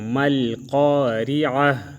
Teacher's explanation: تو ہم باریک پڑھیں گے مل قاریعت اور جب ہم وقف کریں گے تو مل قاریعہ تا کو ہا سے بدل دیں گے